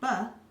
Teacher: is an example of a voiced stop although the sound is also short with one pop of breath our voice box rumbles or vibrates when we say it